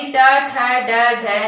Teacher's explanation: और टै वर्ग यानी ट, ठ, ड, ढ, न, है ना, और री, श और र, इनका जो उच्चारण स्थान है वो आपके है मूर्धा, यानी जीभ जब मूर्धा के टकराती है तो आपके टै वर्ग का उच्चारण होता है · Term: मूर्धन्य ध्वनि